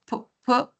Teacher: también se juntan mis labios, bilabial con p